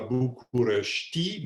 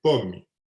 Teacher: le i final, dans la plupart des mots, n'est pas véritablement prononcé. Plus exactement, il ne peut pas fonctionner comme noyau syllabique.